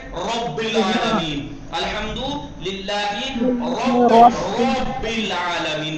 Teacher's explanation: تفخیم ہوگی تو را کو موٹا اور پرحجم ادا کیا جائے گا